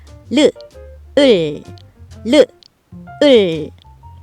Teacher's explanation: 리을의 끝소리는을 르 느를 말할 때와 반대로 혀를 움직여서 소리 내어요. 내려져 있는 혀를 움직여서 혀끝을 안쪽 입천장에 닿도록 많이 구부려서 소리내는 거죠 · 리을의 끝소리는 르를 말할 때와 반대로 혀를 움직여서 소리내요. 내려져 있는 혀를 움직여서 혀끝을 안쪽 입천장에 닿도록 많이 구부려서 소리내는 거죠. 을. 첫 소리는 혀를 많이 구부려서 혀끝이 안쪽 입천장에 닿게 해 놓았다가 소리를 내고 끝소리는 내려져 있는 혀끝을 올려 입천장에 닿게 하면서 소리내고 첫 소리와 끝소리는 혀끝이 반대로 움직이는 것이 다르지만 혀의 움직임과 모양이 같아서 같은 글자를 쓰는 거랍니다.